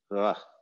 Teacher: It is probably a voiced velar fricative, as in ugh.